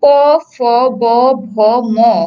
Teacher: এছাড়াও তুমি যদি প, ফ, ব, ভ, ম এগুলো উচ্চারণ করো, তখন দেখবে দুই ঠোঁটের সাথে স্পর্শ হচ্ছে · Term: স্পর্শ বর্ণ